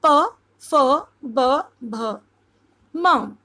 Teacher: पवर्ग में जितने भी व्यंजन होते हैं वो होंठ, दोनों होंठ उसमें मिलते हैं